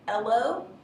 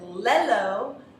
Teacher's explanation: So that would be an omission. But if the student said lello, that is a substitution, a YL substitution.